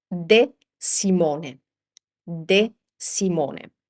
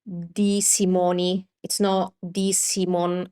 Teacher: It's a closed E sound. So this is not Di Simoni, it's not Di Simon or something like that.